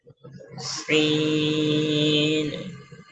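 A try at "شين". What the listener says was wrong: এটা সিন নয়, শিন। হ্যাঁ, মোটা আওয়াজ হবে।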